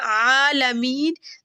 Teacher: آگے ہے عالمین، تو یہ دیکھیں یا ساکن ہے، اس سے پہلے میم کے نیچے کیا ہے، زیر ہے، تو یہ ہو گیا یا مدہ عالمین۔ دیکھیں یا کی جو ساؤنڈ ادا ہوگی وہ منہ کے خالی حصے سے ادا ہوگی، کیونکہ یہ کیا ہے، یا لین ہے اور یہ حروف مدہ میں سے ہے۔